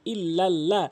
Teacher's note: তাশদের কারণে একে অপর হরফকে ধরে যুক্ত অক্ষরের ন্যায় দুইবার উচ্চারণ করেছি ইল্লাল্লাহ লাল ইয়াজ অবশ্যই এক আলিফ টানবেন মোদের হরফ হওয়ার কারণে